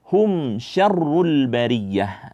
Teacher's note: tidak kemudian syarru di sini ada Ro yang bertasydid e syarru ada sedikit getaran untuk menjelaskan huruf ra dan tidak berlebihan getarannya